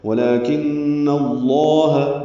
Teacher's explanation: ولیکن میں لام پر کھڑا زبر ہے، 2 حرکات لمبا کریں گے۔ کن نون مشدد پہ غنہ ہے، اس کی زبر کی وجہ سے لام اسم جلالہ پر پڑا جائے گا۔